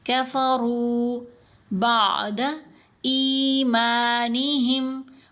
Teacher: یہاں بھی دیکھیں کافا روف، راو وا روف کر کے نہیں پڑھا گیا، تو واو نے کیا کام کیا؟ را کی آواز کو 2 حرکات کی مقدار لمبا کر دیا · را کو موٹا بھی پڑھیں گے، لمبا بھی کریں گے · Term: واو مدہ